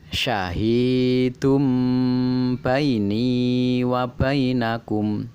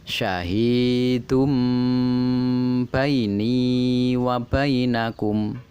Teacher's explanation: Tanwin, dumah tanwin bertemu dengan ba berubah menjadi huruf mem mati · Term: iklab